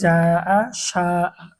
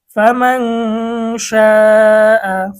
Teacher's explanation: মদের হরফের পরের হরফে একই শব্দে ছোট হামজা হইলে 4 আলিফ টানিয়া পড়িতে হয়